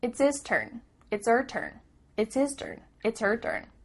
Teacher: the H at the beginning of his and her is cut off